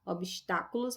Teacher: Obstáculos é uma palavra proparoxítona. Olha aqui a terceira sílaba de trás para frente é tônica